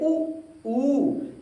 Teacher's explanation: जिन स्वरों के उच्चारण में ओठ कैसे होते हैं, गोल हो जाते हैं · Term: वृत्तामुखी